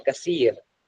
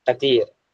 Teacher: और pronunciation of सा जो है वो ता के साथ करते हैं. यानी कि हम जैसे सा को जो है कसीर पे पढ़ते हैं तो सा को सा पढ़ते हैं कसीर, वो कतीर पढ़ते हैं.